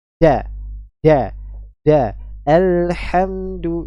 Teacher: huruf Dal keluar dari lidah disebut dengan alisan yaitu dari punggung ujung lidah bertemu dengan pangkal dua gigi seri atas bagian dalam